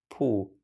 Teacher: This would become puH in Middle Chinese, so with a falling tone.